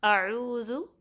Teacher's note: عین درمیانے حلق سے نکلتا ہے